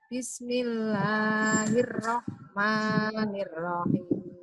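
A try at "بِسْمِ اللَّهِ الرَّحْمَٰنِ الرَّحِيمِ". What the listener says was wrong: Matnya, panjangnya Bu. Panjangnya jangan melebihi 2. Bismillahirrahman.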